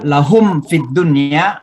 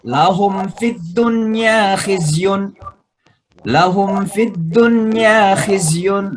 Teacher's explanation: Lahum fi itu mimati ketemu fa, namanya izhar mimi karena wajib mimnya dijelaskan. Cara bacanya jelas ya.